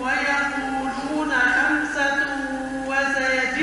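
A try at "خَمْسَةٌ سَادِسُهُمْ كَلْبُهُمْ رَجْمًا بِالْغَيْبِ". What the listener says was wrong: لا فيش واو صحيح خمسه سادسهم رجما بالغيب عود رجما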